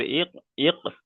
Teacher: হামজা সাকিনকে একটু ঝাটকা কিংবা ধাক্কা দিয়ে পড়তে হবে